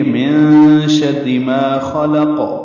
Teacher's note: من شر اس میں جو نون پڑھا جا رہا ہے اس میں اخفا ہو رہا ہے